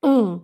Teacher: um fechadinho bem nasal